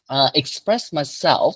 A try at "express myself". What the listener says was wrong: I want to hear the F at the end.